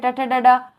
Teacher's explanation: मूर्धा से ट ठ ड ढ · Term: स्पर्शी व्यंजन